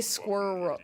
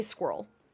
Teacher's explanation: We do kind of just blend it all into one syllable a bit more.